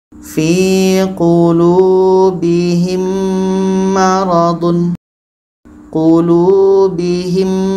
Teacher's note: Dikarenakan hurufnya sudah sama, mim dengan mim, maka otomatis sudah masuk. Bunyi mim sudah masukkan ke mim karena hurufnya sama, sama-sama mim. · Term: idgham mithlain